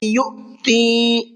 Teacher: حمزہ ساکن ہے اور حمزہ ساکن کے پڑھنے میں جھٹکا ہوتا ہے، تو اس کو جھٹکے کے ساتھ میں پڑھیں گے۔